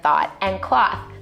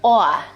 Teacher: One feature common in New York City is what we call a raised vowel in words like thought and cloth. It sounds something like aw.